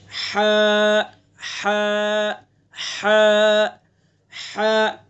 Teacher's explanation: حلق کے درمیانی حصے سے ادا کرنا ہے ہمیں